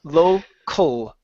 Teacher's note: The sound comes from right down here, ul, okay? It's a schwa into the L, local.